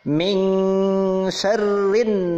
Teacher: Nun sukun menghadapi huruf sin dibaca dengung.